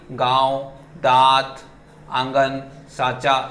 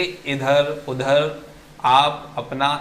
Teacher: अनुनासिक नाक और मुंह दोनों से उच्चारित होता है। गांव बोलने तो नाक से भी आवाज आएगी और मुंह से भी। · फिर आपका आता है दूसरा निर्नुनासिक जो होता है, ये केवल मुंह से होता है। तो अनुनासिक में माउथ और आपका जो नोज है उन दोनों से साउंड आता है, बट आपका निर्नुनासिक जो है उसमें माउथ से आता है